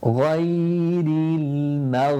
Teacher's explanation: the ghain is one of those letters that you have the sound continuing whilst you pronounce it. غير المغضوب, pushing out the lips for the dad.